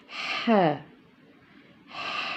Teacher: حلق کے درمیان والا حصہ وہاں سے یہ حرف ادا ہوگا. pronounced from the middle part of the throat. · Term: حروف حلقی